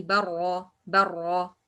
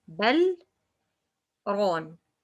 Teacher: I should to make the lam clear here and I don't make merge? Because there is sakt.